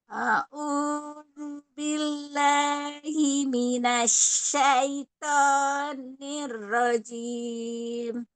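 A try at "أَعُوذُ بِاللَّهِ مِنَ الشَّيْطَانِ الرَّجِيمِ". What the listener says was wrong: Jangan nash pakai shin. Nash. Tengah lidah ya. Nash. Ayya. Ayya. Asya. Nasyaiton.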